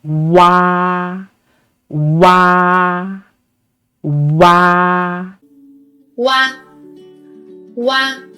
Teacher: When producing wa, we need to say u first, and then quickly glide to say a. Make sure a is pronounced longer and louder than the u final.